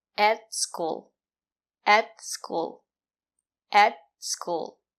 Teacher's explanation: At is not stressed, we pronounce it as et. The sound is more closed. And the letter T is a stop T. · The sound is more closed. And the letter T is a stop T. Put your tongue up and stop the air.